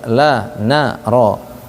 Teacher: Lam dan ro. Karena lam dan ro ini la naro, disebutkan ya ujung lidah ke gusi atas, la na ro. La naro ini dia sekalipun tempat nempelnya sama, tapi dia di ujung lidahnya itu beda titiknya, nggak ada titik yang sama, makanya disebut dengan istilah berdekatan.